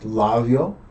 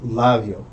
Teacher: It's not labio, it's labio. You don't really fully close your lips. The air keeps escaping. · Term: labial fricative